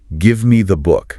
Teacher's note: The stress is on give and book.